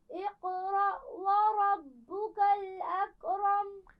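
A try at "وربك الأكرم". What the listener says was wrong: اکرم نہیں پڑھنا، اس کاف پر قلقلہ نہیں ہوتا، ٹھیک ہے.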